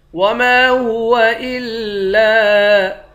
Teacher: میم کے بعد الف ہے، ایک الف کے مقدار کھینچیں گے، لام کے بعد بھی الف ہے، اس کو بھی ایک الف کے مقدار کھینچ کر پڑھیں گے۔